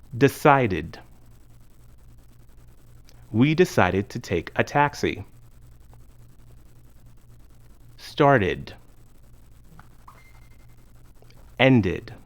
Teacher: In these verbs, the ed ending is pronounced as an extra syllable, id.